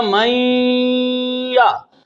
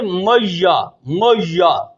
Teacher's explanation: نون کی صفت غنہ کو باقی رکھ کر یا میں ادغام کیا تو بنا میا، لہذا کچھ لوگ پڑھتے ہیں میا، میا، نون کو پورا داخل کر دیتے ہیں یا میں، لہذا اس سے بھی معنی نہیں بدلتا، لہذا قرات کی ادائیگی میں فرق آتا ہے، تلفظ میں فرق آتا ہے، ادائیگی میں فرق آتا ہے، یہ قرات کا مسئلہ ہے۔